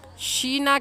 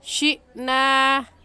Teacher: حمزہ ساکن ہے، جھٹکا دے کر پڑھیں گے